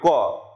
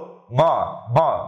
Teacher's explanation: দেখো কোনো প্রভাব নেই, কিন্তু বলো ম ম। দেখো ম যখন তুমি বলছো তোমার নাকে এসে বাধাপ্রাপ্ত হচ্ছে, অর্থাৎ নাক থেকে বাতাস বের হতে চায় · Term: নাসিক্য